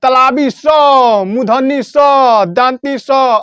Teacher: इसका उच्चारण रगड़ या घर्षण से होता है ठीक है रगड़ या घर्षण से बोलते हैं या फिर हम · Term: उष्म व्यंजन